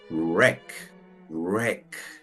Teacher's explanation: Noten cómo ese sonido es como si fuera la R, pero no es tampoco de la R, es como si dijera la R, pero sin golpear la lengua en la parte de arriba. Para hacerla tengo que ejercer más fuerza.